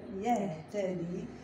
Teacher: لاحظوا معايا التاء مع الدال، تاء مفتوحة والدال مكسورة، إذا لا أقول يهدي بل يهتدي، لا تدغم التاء في الدال لأن هنا عندي تجانس كبير